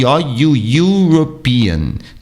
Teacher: Neste caso, eu consideraria um som de consoante e não um som de vogal, embora eu veja uma vogal. A verdade é um ditongo, são duas vogais, um E e um U, mas tem som de Y.